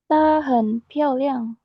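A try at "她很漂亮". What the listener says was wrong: Ya, harus ada h-nya ya.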